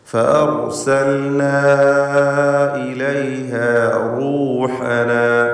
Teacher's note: ദീർഘാക്ഷരമായ അലിഫിനെ മദ് മുൻഫസിൽ ജായിസ് നൽകി 4-5 ഹറക്കത്തിൻ്റെ അളവിൽ ദീർഘിപ്പിക്കൽ അനുവദനീയമാണ്.